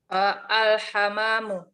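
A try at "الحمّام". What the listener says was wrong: Al-hammamu. Kalau al-hamamu saja, itu nama burung ya, burung. Hamam. Burung merpati. Dan semisalnya. Tapi kalau hammam, ini kamar mandi.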